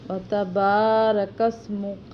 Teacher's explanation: اس میں با کو لمبا کریں گے ایک الف کے برابر